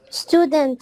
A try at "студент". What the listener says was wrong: Student desangiz inglizcha qoldi. Student. Stew emas.